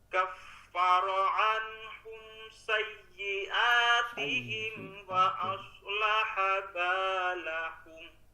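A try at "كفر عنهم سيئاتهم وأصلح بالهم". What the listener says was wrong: Oke, mantap. Mantap, bagus banget, Pak.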